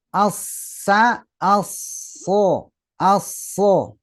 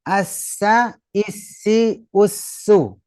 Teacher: Shad itu diangkat pangkal lidahnya